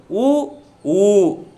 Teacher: இதழ்களை குவிப்பதால் பிறக்கும் எழுத்துக்கள் உ ஊ